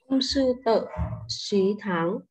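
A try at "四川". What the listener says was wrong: À, đừng đọc là xí nhé, sứ em nhé. Sứ tháng chi phan.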